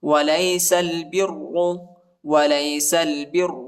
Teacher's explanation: را کو شدت کے ساتھ سختی کے ساتھ پڑھیں گے اور موٹا بھی پڑھیں گے